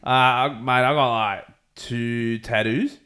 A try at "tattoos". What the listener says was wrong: Yeah, see, I feel like there's a U on the end of yours where there's not on mine. 2. Tattoo. There's no U on the end of that. It's just tattoo.